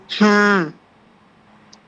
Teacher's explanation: হলকের শুরু হইতে সহজ আওয়াজে